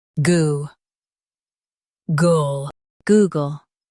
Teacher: Stress goo and keep gull light.